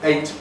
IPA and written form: eɪt (eight)